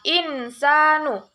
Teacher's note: Hukum yang kedua dalam surah Al-Zalzalah ayat ketiga adalah insanu, yaitu ikhfa hakiki karena ada nun mati atau tanwin bertemu dengan huruf sin, cara membacanya samar-samar membentuk huruf sin